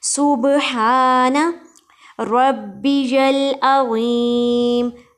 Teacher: ہا کو ایک الف کے برابر کھینچیں گے اور حلق کے درمیان والے حصے سے ادا کریں گے